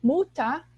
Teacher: esse ER no fim fica como um A